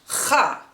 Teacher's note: is a voiceless pharyngeal fricative it's articulated in the back of the throat like breathing on glass to steam it up or to check your breath if it smells good or not